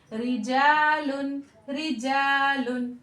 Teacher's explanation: अब एक और कायदा देख लेते हैं कि यहाँ पर रा के नीचे जेर है, तो जिस रा के नीचे जेर होती है उसे हम बारीक पढ़ते हैं